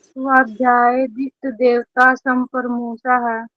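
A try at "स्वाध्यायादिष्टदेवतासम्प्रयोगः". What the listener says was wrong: स्वाध्यायादिष्ट देवता संप्रयोग है, डबल या है यहाँ पे, आप एक या को क्यों बोल रहे हैं? स्वाध्यायादिष्ट देवता संप्रयोग है,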